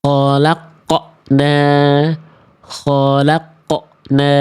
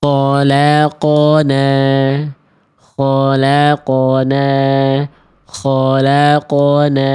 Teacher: pantulannya sudah ada tapi di ujung pelafalan karakter pantulannya itu tertahan · Jadi bunyi qafnya itu kayak ada hentakan sehingga bunyi di ujung qafnya itu kayak nambah huruf hamzah. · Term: pantulannya tertahan